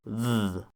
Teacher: So instead of that z, we want a th, but on the alveolar ridge, a th sound. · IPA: [ð̠]